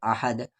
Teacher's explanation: کہ آیت نہیں رہتا تو احدن، آیت ہے تو احد، اور رکنے کی صورت پہ دال ساکن ہو جا رہا، یعنی یہاں پر قلقلہ ہوگا